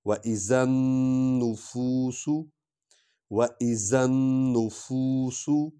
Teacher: سین سیٹی کی آواز نکلے گی